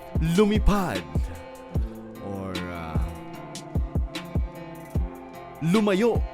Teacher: this is two weak syllables followed by a strong syllable. So this is, you guessed it, da-da-dum. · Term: anapestic